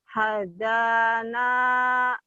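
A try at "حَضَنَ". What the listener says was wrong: Hadana. Da-nya tebel ya.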